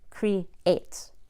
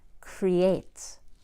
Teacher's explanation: you create creates has a Y between the E and a I wouldn't say pre eight then I would sound choppy it's creates all in one breath